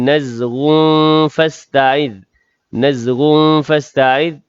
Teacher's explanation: tanwin bertemu dengan fa, ikhfa hakiki dengung 2 harakat. Ada tanda waqaf, jaiz.